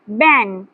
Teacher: একটু নাকে থেকে শব্দটি আসবে। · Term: নাকশিক্য